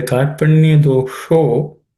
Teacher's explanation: the sh is cerebral sh, tip of the tongue should point upwards